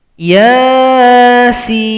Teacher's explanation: kalau yang Sin ini mad lazim mukhafaf Harfi enam harakat atau enam kitukan